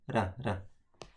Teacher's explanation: So you make it by tap your tongue to the alveolar, so it becomes sound like ra.